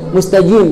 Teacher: Kalau orang Mesir pakai jim, ya, ga-nya itu mustajim seperti huruf jim, padahal bukan jim